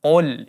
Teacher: huruf qaf di sini berbaris dhammah, maka kita baca tebal. Qul, ya, jangan sampai ditipiskan karena dia akan merubah maknanya. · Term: qaf dibaca tebal